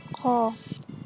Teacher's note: Makhraj huruf qaf terletak pada bagian lidah paling dalam dan langit-langit mulut yang berdaging. Adapun cara mengucapkannya seperti Q tidak boleh disertai nafas